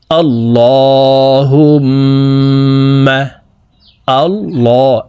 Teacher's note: এই লামকে ল অর্থাৎ মোটা করে পড়তে হবে